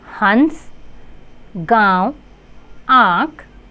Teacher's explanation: इसका उच्चारण नाक और गले से होता है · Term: अनुनासिक